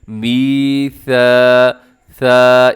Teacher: میثا، ثا، اس میں سیٹی نہ ہو